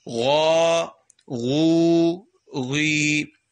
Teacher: یہ غائن, اس کو موٹا کر کے پڑھیں